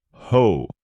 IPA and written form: hoʊ (Hoe)